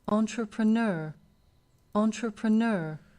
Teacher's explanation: ouvir você preste atenção nas sílabas que são fortes entrepreneur entrepreneur Eu tenho um ponto de ênfase no começo e outro no final